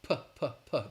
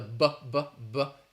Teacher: The big difference is that the P is voiceless, P, P, P. There's no vibration. And the B, the B, B, B, is a voice sound.